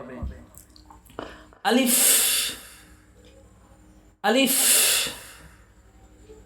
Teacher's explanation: আলিফ বলার সময় দ্রুত বলতে হবে এবং শেষে হালকা বাতাস বের করতে হবে।